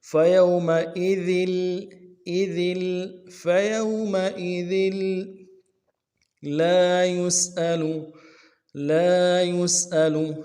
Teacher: ذال کے تنوین کو آگے لام کے ساتھ ملانا ہے، لام کے اوپر تشدید زور دیں گے